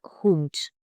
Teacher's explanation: Don't soften the D at word endings. It's a hard T, not soft D.